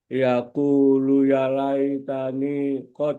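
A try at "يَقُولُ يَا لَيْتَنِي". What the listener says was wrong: Yaqulu ya panjang. Yaqulu ya laitani qaddamtu li hayati.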